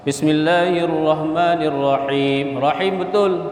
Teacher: Huruf ha yang mati, huruf ha di tengah tenggorokan.